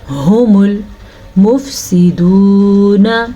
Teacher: ہم المفسدون، اس ہا کا دھیان رکھنا ہے، ہا سینے سے نکلتی ہے اور حروف حلقی میں شامل ہے